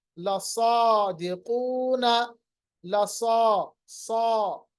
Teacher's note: सौद की आवाज को पढ़ते वक्त होंठों को गोल भी करते हैं